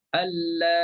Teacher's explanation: Hamzah tu dah hilang, dah dibuangkan. Ya tu kita matikan dia. Okey? Dia jadi macam mat lazim lah.